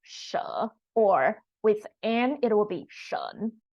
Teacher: you second tone it's more like pronounced in China but that in Taiwan we pronounce it more like a third tone